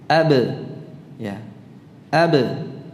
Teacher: Jadi ada pantulannya, itulah qalqalah.